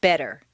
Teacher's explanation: the Double T in better is pronounced d